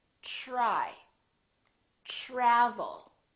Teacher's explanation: We say try, try. So the TR together make this sound almost like a CHR, almost like ch, but it's a softer one. It's ch, try, try.